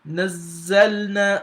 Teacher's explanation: you have to assume you are pronouncing two letters, one with sukun, one with the fatha here. So that's how the shadda is pronounced. · So you see how I pronounce the zal here as well. The zain here, I pronounce it with Shaddah.